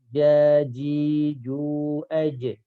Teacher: Karena istifal itu maksudnya adalah pangkal lidah tidak ngangkat. Itu efeknya suara jadi tipis.